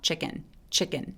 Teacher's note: 이렇게 강세 뒤에 오는 K 소리들은 낀처럼 약간의 된 소리를 냅니다